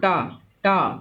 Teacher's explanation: मूर्धन्य में क्या होता है, जीभ मुड़ जाती है, जीभ अंदर की ओर मुड़, जैसे टा बोलो, टा टा तो देखो जीभ मुड़ जाती है, टा बोला जीभ मुड़ गई तो मूर्धन्य है।